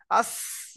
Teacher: দেখেন আপনি চাপ দেন চারটে দাঁত এক জায়গা করে, আর জিভের আগাটা ওর গায়ে ধাক্কা লাগিয়ে একটা আওয়াজ করেন, দেখবেন যা উচ্চারণ হচ্ছে আজ, আস। দেখবেন আপনার সিটি বেরোচ্ছে সিনের